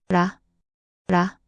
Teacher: Your tongue flicks against the roof of your mouth. · Between R and L. At the beginning of a word, it often sounds like a soft R like in run. In the middle or end of a word, it usually sounds like L like in leaf.